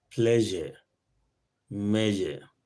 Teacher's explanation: That is voiced palato-alveolar fricative.